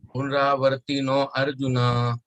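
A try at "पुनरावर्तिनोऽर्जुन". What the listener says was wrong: Punaravartino Arjuna. You should not say no Arjuna. No Arjuna. No Arjuna nahi. No Arjuna.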